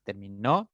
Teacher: fíjense que la intensidad recae en la otra sílaba en la tercera sílaba